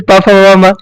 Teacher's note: और प वाला सबका ओष्ठ है